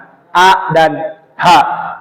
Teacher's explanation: Di sini tidak ada yang bergerak, namun yang bekerja itu adalah kerongkongan